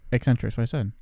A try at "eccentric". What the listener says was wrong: It's eccentric. You say it and my brain says that's not right, but then I don't know how to correct you, so maybe it is. It's not it's not a hard E. Yeah. Eccentric.